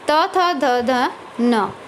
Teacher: जिन व्यंजनों के उच्चारण में जिह्वा की नोक ऊपरी दांतों को स्पर्श करती है तो वो दंत्य व्यंजन कहलाते हैं।